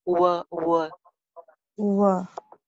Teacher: अब were में W है. फोकस करने के W के लिए हम अपने होंठों को गोल करते हैं. V साउंड के लिए गोल नहीं करते.